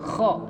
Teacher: Kalau kho bagian tengah dia keluarnya dari tenggorokan bagian tengah.